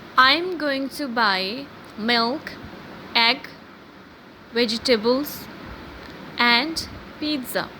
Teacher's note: In the first three items, our voice pattern was going upward, and in the last, when I said pizza, it was going downward. It was going downward, or it was falling.